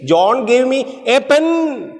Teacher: Pen is stressed. Pen means what? Nothing else but pen.